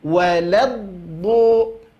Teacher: Itu ada mengalir suara imtidadus saut, ya, memanjangkan suara terlebih dahulu, pergesekan antara tepi lidah dengan gigi geraham atas. Itu belajar pada huruf do, ya. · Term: sifat istitalah